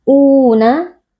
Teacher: karena ada wau sukun yang sebelumnya berharakat fathah dibaca panjang dua harakat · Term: Mad Thobi'i